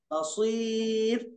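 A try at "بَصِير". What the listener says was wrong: सीर बोलो तो सीन हो जाता, फिर सीन नहीं है, स्वाद है, स्वाद को मोटा पढ़ना है।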